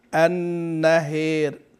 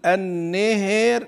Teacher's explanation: الاماله ننح بها الى ما يعني بين بين الفتحه وبين الكسره ننح بالفتحه نحو الكسره وننحف جهه الياء طيب اذا احنا عندنا